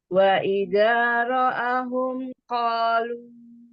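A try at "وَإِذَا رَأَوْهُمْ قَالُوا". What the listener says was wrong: Betul belum beres, Bu. Wa idza ra'auhum ra'aunya beresin dulu.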